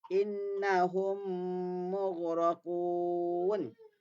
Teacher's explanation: kalau mim jumpa mim, dengung. Nun jumpa nun pun dengung. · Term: idgham mutamasilain bi gunnah